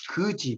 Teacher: 거지의 어가 장음일 때는 의에 가깝게 발음한다